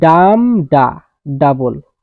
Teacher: দ্বিতীয়তে আছে ট্ৰকিক মিটাৰ, এ stressed syllable followed by an unstressed syllable.